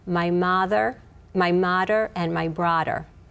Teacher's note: the UH in mother and brother would become like an AA